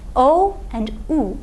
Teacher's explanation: These are the back rounded vowels, O and U.